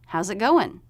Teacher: notice the stop t at the end of it we're not releasing it